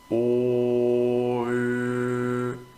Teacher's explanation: la lengua va a ir más adelante en la segunda vocal